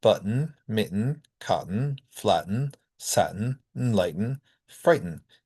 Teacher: what happens when the sound preceding the syllabic N is a T? Then we get the glottal stop pronunciation.